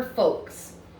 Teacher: Folks is a funny word because you cannot hear the L sound in it at all.